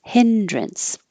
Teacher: It looks like drance, but we say drince or drunce because it's not stressed.